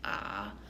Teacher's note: Third tone is the dipping tone or low flat tone, so it's going to be like ah.